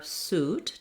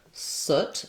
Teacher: So moving from our suit, tense vowel, let's now look at the word soot that has our lax vowel.